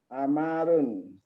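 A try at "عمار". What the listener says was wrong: Ammarun, mimnya tasdid. Ammarun.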